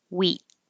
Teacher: Even if I'm not releasing the T, I'm holding it there.